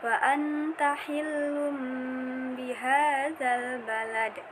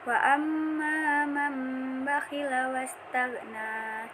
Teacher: Ketentuannya, apabila nun sukun atau tanwin bertemu dengan huruf ba, maka cara membacanya menjadikan bunyi nun sukun menjadi bunyi huruf mim yang disertai dengan dengung selama kurang lebih 2 harokat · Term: iklab